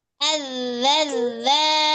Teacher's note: Ya, disempurnakan sifat rokhawah pada harfu zal.